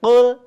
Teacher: Hati-hati ketika menemukan huruf lam yang disukunkan, tidak dipantulkan, harus mengalir lembut.